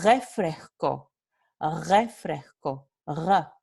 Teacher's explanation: Aquí es la fricativa velar o uvular sonora